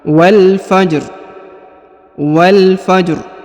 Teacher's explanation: Jadi rohnya disukunkan tapi dengan suara tipis.